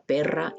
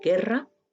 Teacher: ilustran el contraste fonológico entre p y g, entre la oclusiva bilabial sorda y la velar, la oclusiva velar sonora.